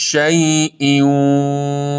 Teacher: این شین تفشی داره مثل صدای زوزه باد